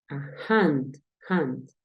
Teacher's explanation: Si escuchas en este caso, la H suena como una J, o sea, la normal.